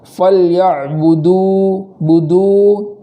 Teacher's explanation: آخر میں واو مدہ ہے تو وہاں ایک الف کے برابر تاخیر کریں گے